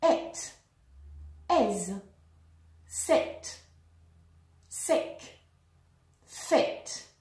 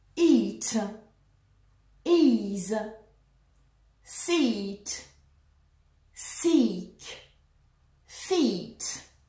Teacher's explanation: Long E, as in eat, must be stretched like this elastic band.